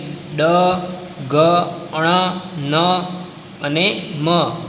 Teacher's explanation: મુખનો માર્ગ જે અવરોધને કારણે બંધ થઈ જતાં હવાનું મોજું નાક દ્વારા પસાર થાય ત્યારે અનુનાસિક ધ્વનિ સંભળાય છે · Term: અનુનાસિક ધ્વનિઓ